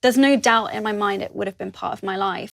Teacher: uses glottal stops between the words doubt and in, and between the words part and of.